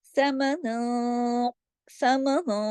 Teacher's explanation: ہوگا، اخفا بھی موٹا ہی ہوگا۔ دوبارہ بتا دیتی ہوں کہ اخفا آواز تھوڑی ناک میں جاتی ہے، تھوڑی باہر رہتی ہے · یہ کہ تمام آگے سمن تک باریک حروف ہوں گے، لیکن چونکہ آگے قاف ہے اور ہم یہاں اخفا کر رہے ہیں اور قاف موٹا حرف ہے تو یہاں اخفا بھی موٹا ہی ہوگا